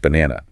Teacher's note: The stress is on the middle syllable. B N A N A. The first and third syllables are reduced to schwah.